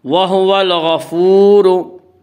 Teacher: وَهُوَ الْغَفُورُ، وا مدہ وہ واو جو ساکن اس سے پہلے پیش ہو، وا مدہ کو ایک الف کے برابر کھینچ کر پڑھیں گے